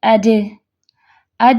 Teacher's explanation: اب آپ کا جو زبان کا درمیان والا حصہ ہے وہ اوپر جا کے پیلٹ یعنی کہ تالو کو چپک جاتا ہے · کیا مخرج ہے جیم کا؟ وسط اللسان اور بالمقابل تالو